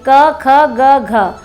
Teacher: क वर्ग का उच्चारण स्थान क्या होता है ये भी जान लीजिए, कंठ से। कंठ होता है ना, जो गला के बीच में होता है वो कंठ होता है।